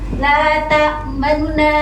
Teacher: Rom ini membaca sebagian besar harokat goma menjadi lata manuna. Jadi cuma nunya ini dia dilirihkan suaranya dengan harokat tidak sempurna. Ini. Jadi harus ikhtilas.